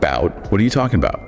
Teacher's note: stress is on about. So the a at the beginning is a schwah